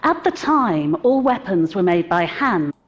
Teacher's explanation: So you can hear that we're not stressing the were there, right? We're not stressing it, and that's why we pronounce it as were.